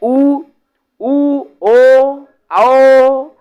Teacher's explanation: इसमें गोल बन रहा है ना मुंह एकदम हमारा होठ जो है एकदम गोल हो जा रहा है। इसलिए ये वृत्त मुखी है।